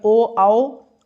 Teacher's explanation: ओठ और गले के सहारे से जो बोले जाते हैं उन्हें कंठोष्ठ कहते हैं।